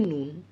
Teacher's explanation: লবণের ল টা সেখানে দন্ত ন তে পরিণত হয়ে গেছে